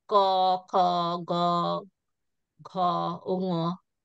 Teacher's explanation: গাটরাল, যেটা গলার পেছন থেকে আওয়াজটা আসে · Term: গাটারাল সাউন্ড